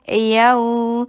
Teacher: यऊ नरमी से अदा कीजिए, हरफ लीन है, वाव साकिना क़ब्लहा मफ्तूह, नरमी से अदा कीजिए और 2 हरका से कम और 1 हरका से ज़्यादा किए।